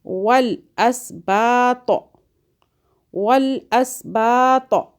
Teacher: تو کو موٹا پڑھیں